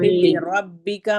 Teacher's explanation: پھر لربک میں را کو ہم موٹا پڑھیں گے، باقی حرف ہمارے باریک ہیں